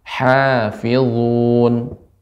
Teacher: bukan ha besar, namun ha yang tengah tenggorokan. Hafizun.